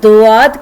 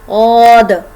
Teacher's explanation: औद मैं ज़बान की राइट साइड राइट दाढ़ों से लगा रही हूँ।